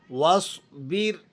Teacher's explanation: واؤ کو آپ نے صاد کے ساتھ جب ملانا ہے تو الف کو بیچ میں سے گرا دینا ہے۔